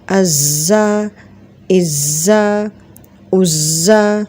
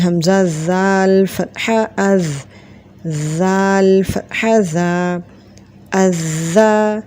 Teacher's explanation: Now the zal has difference of sound from za and zal. Za has whistling and zal has no whistling. So here we say Hamza zal fatha az zal fatha za azza, and then it is Hamza zal kasra is zal fatha za izza, and then Hamza zal Dhamma uz zal fatha za uzza.